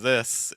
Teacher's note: I just said the word this and my tongue stayed behind my top front tooth